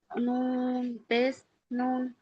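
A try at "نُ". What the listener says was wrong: নু, পেস নুন নয়, নুন নয়, নুন পেস নু,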